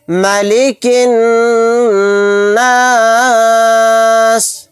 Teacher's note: کاف کو نون میں ملا دیں گے، یہ الف اور لام نہیں پڑھا جائے گا، یہاں پر نون کے اوپر تشدید ہے، غنہ کر کے پڑھیں گے، سین کو ساکن بنا کر پڑھیں گے آیت کرنے کی صورت میں۔